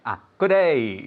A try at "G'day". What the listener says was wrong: No, even even shorter.